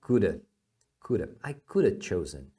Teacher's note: A maior parte do som se manteve. Agora o have se tornou um a. Tá? Ele se escreve em um a, mas na verdade o som que você faz é um a, como se fosse um a, um acentinho aqui, né? · O som do schwa é um som de a. É um som bem preguiçoso, tá?